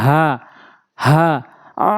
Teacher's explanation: এই হলকের শুরু থেকে উচ্চারণ হয় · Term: ছোট হা